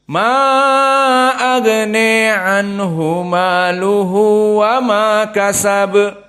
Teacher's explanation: Walakin al-farq Al-Kisai wal Khalaf Al-Ashir, maka mereka membaca dengan tawassut, tidak begitu panjang pada mad jaiz, namun dibaca dengan imalah al-kubra pada alif agna menjadi agne